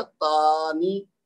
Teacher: تا کو صرف 2 حرکت دوں گا